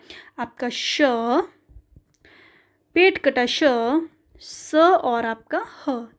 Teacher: जब हम इनका उच्चारण करेंगे तो संघर्ष लगेगा और आपका ऊष्मा भी उत्पन्न होती है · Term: ऊष्म संघर्षी व्यंजन